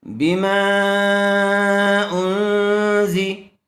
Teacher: حمزہ نون پیش ان، نون ساکن کے بعد حروف اخفا میں سے زا آیا ہوا ہے اس لیے غنے کے ساتھ اخفا کر کے پڑھیں گے